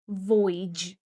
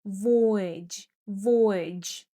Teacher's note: Pay attention that the stress falls on the first syllable